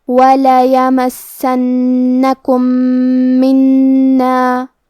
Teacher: یہاں حکم ہے ادغام متماثلین صغیر. ہم پہلے میم کو دوسرے میم میں ملا کے ایک ہی میم غنہ اور تشدید کے ساتھ پڑھیں گے